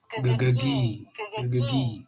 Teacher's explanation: So the tongue pulls back for the g, and then forward for the high E.